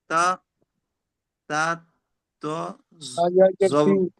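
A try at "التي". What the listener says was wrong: কোথায় তো তো পড়ছেন? তারপরে ওটা কি ইয়া দেখতে পাচ্ছেন না? তা ইয়াটা পড়বেন, তারপর তো তা যাবেন। ইয়াটা আগে বানান করবেন তো। তা ইয়াজের কি হয়? টান, টান টান দিতে হয় না? হুম একসঙ্গে বলেন। আল্লাতি,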